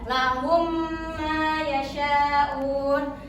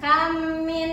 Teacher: di dalam mim pertama dan mim kedua itu didengung selama dua harakat. Iya sama seperti ikhfa syafawi dan idgham idgham mim mimi. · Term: idgam mimi